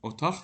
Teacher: Otaq formasında tələffüz edilir. Burda Q hərfi X səsinə dəyişib.